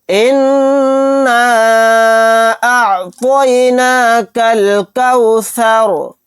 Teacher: اِنَّا أَعْطَيْنَاكَ، یہاں پر دیکھیے طا کو موٹا یعنی پر پڑھنا ہے، کاف کو ڈائریکٹ لام میں ملا دیں گے، یہ الف نہیں پڑھا جائے گا۔ اِنَّا أَعْطَيْنَاكَ الْكَوْثَرَ، یہاں پر را کو ساکن بنا کر پڑھیں گے کیونکہ یہاں پر آیت ہو رہی ہے۔